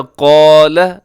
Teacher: قال اس میں قاف موٹا ہے، لام کی بڑھ زبر ہے، لمبا ہرگز نہ کیجیے گا۔